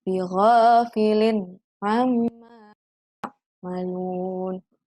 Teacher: Ada kasroh tanwin bertemu dengan huruf ain, maka dibaca jelas atau idhar.